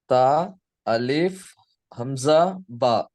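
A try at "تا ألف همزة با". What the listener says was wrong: Very good.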